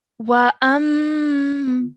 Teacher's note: before letting it go to produce the madda sound, we have to produce the gunna sound in our nose for 2 seconds.